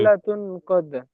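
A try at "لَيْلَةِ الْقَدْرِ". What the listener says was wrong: লাইলাতিল, তা যে নিচে জের আছে। কদর। একসঙ্গে বলতে হবে।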